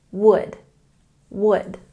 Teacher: We don't say the L sound in this word